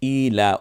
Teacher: লামের উপরে খারা জবর যেটা, এটা একালিপ টানতে হবে